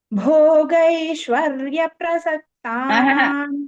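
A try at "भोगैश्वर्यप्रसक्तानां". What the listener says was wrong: Bhagini, Bhogaishwarya prasaktanam, no. Bhogaishwarya pa should be taken immediately.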